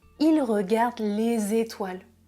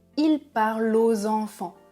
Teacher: Quand je fais la liaison avec un S ou un X, je prononce toujours Z